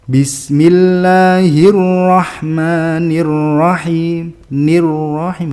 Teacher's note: ro yang di fathah itu yang menang sehingga dari awal sudah sudah langsung tafkhim